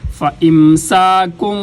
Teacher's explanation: فا اوپر والے دانتوں کو نیچے والے ہونٹوں کے تری والے حصے پہ لگائیں گے تو فا ادا ہوگی